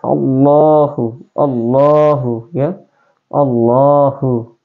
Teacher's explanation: yang namanya ee lam tafhim ya atau lam dibaca tebal ini kalimat Allah dibaca tebal dan panjang dua harakat